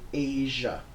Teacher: the first sound in there is a zh sound. It's like a white noise sound, or in the word Asia.